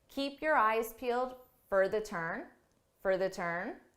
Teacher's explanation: for becomes a unstressed reduced sound